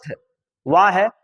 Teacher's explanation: दांत और ओठ दोनों से यह बोला जाता है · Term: दंतोष्